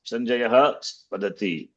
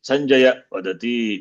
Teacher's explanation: That Sanjayaha Visarga will drop because of Sandhi. Sanjaya Vadati, we say.